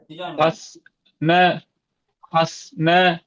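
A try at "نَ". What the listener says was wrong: ந ந என்ன நீட்டக்கூடாது. ந ஹஸ் ந ஹஸ் ந.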